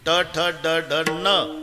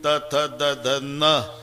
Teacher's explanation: ट ठ ड ढ न दाताशी संबंध नाही त थ द ध न दाताशिवाय उच्चार नाही